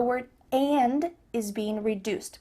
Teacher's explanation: hear the word and is being reduced just cut off that final D sound